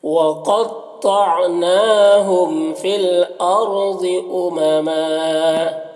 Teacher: دو زبر پر جب وقف کرتے ہیں تو ایک زبر کے ساتھ الف پڑھتے ہیں · قاف اور طا دونوں حروف مستعلیہ میں سے پر پڑھیں گے